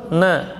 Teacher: ujung lidah di gusi atas, dua gigi seri atas. Na paduan dengan khayshum ya. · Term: nun tawassut